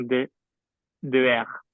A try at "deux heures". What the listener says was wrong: Maybe if you add the Z sound, that's going to be easier.